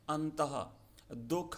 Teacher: विसर्ग का उच्चारण ह की तरह सुनाई देता है